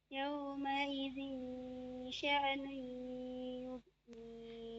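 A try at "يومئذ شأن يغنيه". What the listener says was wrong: Ingat ditahan dulu ya, tanwin ketemu dengan shin itu ya, sya itu ditahan. Yauma izin sya'nu yughni. Nah, perhatikan ifa itu ada 3 macamnya ya, ada ifa akrob, ifa abad, ifa ausat.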